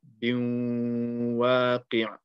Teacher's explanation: So you want to join the ba to the waw and apply ghunna. So biwaqi', also stretch the waw. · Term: idgham with ghunna